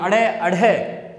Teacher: ताड़न जात का मतलब आवाज तड़ाक जैसी आती है · इनके उच्चारण में जीभ दो बार टच करती है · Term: द्विगुण